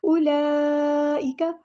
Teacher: उलाइका यहाँ पर उलाइका वाव को नहीं पढ़ना, उलाइका बड़ी मद आ गई है, कनेक्टेड मद यानी मद मुत्तसिल 4 या 5 काउंट हमने इसको लंबा करना है